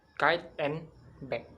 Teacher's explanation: Both k and g block airflow with the back of tongue against the soft palate.